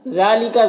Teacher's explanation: ذال میں کھڑا زبر ہے، اسے ایک الف کے برابر کھینچیں گے